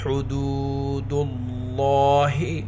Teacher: لفظ اللہ کے لام سے پہلے پیش، لفظ اللہ کے لام کو پر پڑھیں گے